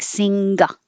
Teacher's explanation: your tongue is touching so the back goes up sing and the air is forced to go through your nose